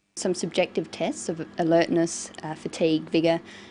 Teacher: someone to fall asleep so she uses a variety of intonation she uses rising and falling tones and a tone that's neither Rising nor falling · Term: list